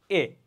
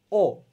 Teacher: উচ্চারণের সময় ঠোঁট আমার কি একটু গোল হয়ে যাচ্ছে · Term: গোলাকৃতি স্বরধ্বনি